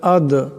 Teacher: আদরাকা মাল আদ, এখানে দাল সাকিন, দাল কলকলা হরফ, আওয়াজটিতে একটি টক্কর খাবে